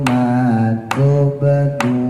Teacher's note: ma tubdun banyak qalqalah pantul ya.